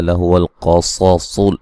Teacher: قاف اور صاد دونوں جگہ ان کو موٹا ادا کرنا ہے